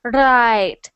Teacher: so when you make the r sound when you say right I'm hearing your tongue is scraping against the top of your mouth like right it's going like this not quite out of your